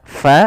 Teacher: alirkan nafasnya fa jangan dibaca pa